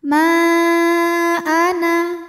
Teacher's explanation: didahului baris fathah pada kata ma hamzahnya a pada kata Ana maka mim dipanjangkan boleh empat boleh lima harakat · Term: Mad Jaiz munfasil, mad jaiz munfasil